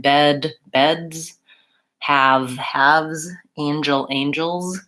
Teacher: whenever I'm adding an S to make something plural, if it goes on a voiced sound like bed, beds, have, haves, angel, angels, then that needs to be a Z.